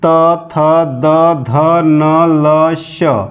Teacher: वह वर्ण जो जीभ के द्वारा दांत को टच करते हुए बाहर आती है उसे हम दंत बोलते हैं